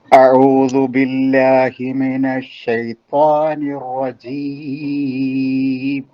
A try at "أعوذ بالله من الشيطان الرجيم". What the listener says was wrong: അവിടെ ബില്ലാഹി എന്ന് പറഞ്ഞപ്പോ ഹാ നമ്മളെ ബോട്ടം ഓഫ് ദി ത്രോട്ടിൽ നിന്നല്ല വന്നതെന്ന് തോന്നുന്നുണ്ടല്ലോ.